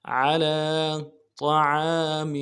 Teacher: طا کو موٹا کرنا ہے، عین کے ساتھ الف مدہ ہے، ایک الف دال میں کھینچیں گے۔